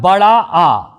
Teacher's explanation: तो यदि हम उच्चारण की दृष्टि से देखें तो केवल बड़ा आ हमारा विव्रत स्वर है, क्योंकि इसके उच्चारण में हमारा मुख द्वार पूरी तरह से खुल जाता है, तो यह हमारा विव्रत स्वर है।